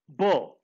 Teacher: In the production of b, vocal cords are considerably vibrated. Vocal cords are not separated. They come together, and when they come together, they vibrate.